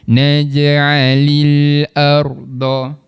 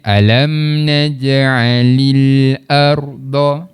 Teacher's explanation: Huruf lam ni makhrajnya di bahagian hujung lidah, sentuh pada langit. Kat situ. Alam naj'alil arda.